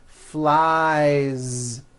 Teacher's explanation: So you've got I fly, he flies. Keep that ending voiced.